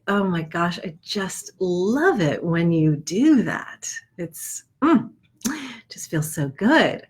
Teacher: it might become rounder and more breathy and just kind of open and and slower